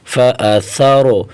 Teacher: سا را زبر سر، فا سر. یہاں سا کو را کے ساتھ ملیں گے، را کو موٹا کریں گے